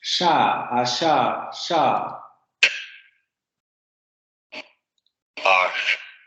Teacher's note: La lengua sube a los postalveolos. No va a haber vibración de cuerdas vocales. Vamos a tener un fricativo · La punta de la lengua sube a la zona postalveolar.